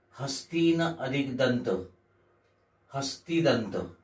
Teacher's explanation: या नियमामध्ये पहिल्या शब्दातील शेवटच न हे जे व्यंजन आहे हे लोप पावते आणि दोन शब्द एकत्र येतात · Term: न चा नियम